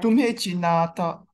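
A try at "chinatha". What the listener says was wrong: Chinata. Don't stress the word chinata. Chinata. Not long A.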